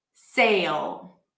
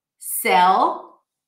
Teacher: The A sound. The A as in day is often reduced to E and pronounced as E